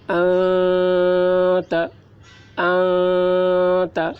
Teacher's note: نون کی آواز کو ناک میں چھپا کر پڑھیں گے، اس کو اخفا کہتے ہیں۔ ناک میں چھپا کر، جیسے انت، انت ایسے پڑھیں گے۔